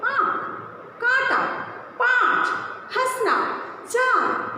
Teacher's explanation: जब किसी स्वर के उच्चारण के लिए गले के साथ साथ नाक की भी सहायता ली जाती है तो उसे ही हम अनुनासिक कहते हैं।